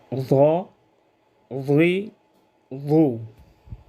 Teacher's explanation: ضاد کو زبر زیر پیش کے ساتھ یوں ادا کریں گے: ضاد زبر ضا، ضاد زیر ضی، ضاد پیش ضو۔ خوب موٹا ادا ہو استعلاء اور اطباق کی وجہ سے